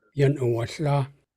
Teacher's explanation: Okay, let's practice that. So the last sound in this phrase is a Tlingit L, and you don't voice it. You don't put your voice through. You just breathe out the sound.